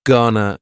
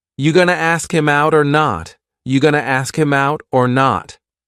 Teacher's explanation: It's another informal contraction, just like wanna. Gonna is generally pronounced with the schwa.